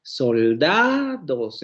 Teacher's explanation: en la palabra soldados, vean cómo el acento cae en da. Soldados. Entonces, las otras dos sílabas son sílabas átonas. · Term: sílaba tónica